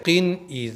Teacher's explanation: जल्दी पढ़ेंगे यानी तनवीन पर बहुत देर तक रुके नहीं रहना है जैसे किन इज किन पर मैं बहुत देर तक नहीं रुका